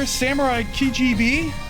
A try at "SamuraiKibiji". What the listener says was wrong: You said it wrong. I practiced saying it out loud, and you said it wrong. You said Kijb. It's Kibiji.